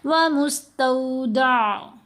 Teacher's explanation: اب یہاں پر آئین کو ساکن کرنا ہے، تو آئین کی آواز کو جھٹکا نہیں دینا۔ اب بہت سے لوگ اس کو پڑھیں گے ومستودع، یہ غلط ہے، دا نہیں کرنا، ومستودع، دا آئین گلے سے ادا ہوگی لیکن سمودھ طریقے سے، جھٹکے کے ساتھ میں۔